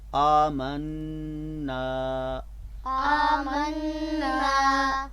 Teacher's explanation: حمزہ پر پہلا جو حمزہ ہے اس کے اوپر کھڑا زبر ہے، لہٰذا اس کی آواز لمبی کریں گے